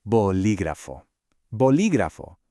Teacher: making sure to put that stress on the second syllable